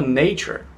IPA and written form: ˈneɪtʃər (Nature)